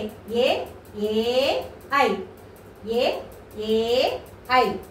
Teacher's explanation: కంఠ తాళవ్యాలు అంటే కంఠం నుంచి దౌడ భాగం నుంచి పుట్టుకొచ్చిన అక్షరాన్ని కంఠ తాళవ్యాలు అని చెప్పేసి అంటారు.